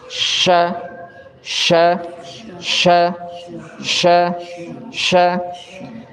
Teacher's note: sifatnya alhams ada keluar angin bukan cuman al-hams tapi dia atafasyi penuh anginnya itu di dalam mulut attafasyi cuman dimiliki oleh huruf syin terus dia istigfal dan dia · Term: at-tafashi